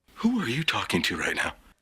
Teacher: Every word or even every syllable gets a different note.